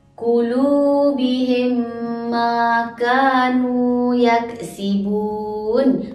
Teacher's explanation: Dibaca secara dengung dengan kadar dua harakat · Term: Idgham Mislain